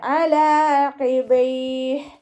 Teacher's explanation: ഖാഫിൻ്റെ മഹ്റജ് വരുന്നത് അക്സൽ ലിസാനാണ്, നമ്മുടെ നാവ് അവസാനിക്കുന്ന ഭാഗം. അപ്പോൾ സൗണ്ടിനെ ആ ഭാഗത്ത് തന്നെ കൊണ്ടുവരാൻ ശ്രദ്ധിക്കുക.